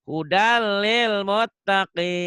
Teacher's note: Tanwinnya melebur ke L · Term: Idgham bila gunnah